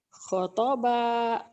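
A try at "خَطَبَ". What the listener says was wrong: Kho-nya panjang. Khotoba.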